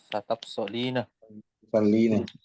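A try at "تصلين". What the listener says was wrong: Tusallina. Jadi kita jangan tambahkan sa dulu ya. Sa itu di situ artinya kan akad. Jadi bisa dipisah. Tusallina. Tinggal masukkan ke wazan taf'alina.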